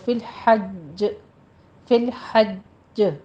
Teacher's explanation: جیم double ساکن ہو رہا ہے تو تھوڑا سختی کے ساتھ آپ نے رک کر قلقلہ کرنا ہے